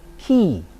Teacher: whenever k precedes a vowel as in ki, the constriction at the velum is fronted. So here is about the constriction, and the additional diacritic is a little plus symbol showing that there's some sort of fronting of the tongue involved.